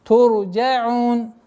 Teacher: При остановке фатха аннулируется, переходит в сукун. Здесь долгота в размере двух огласовок.